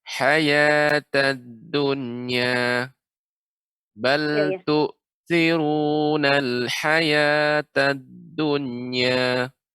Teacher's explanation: ketika dal bertasydid maka tidak perlu qalqalah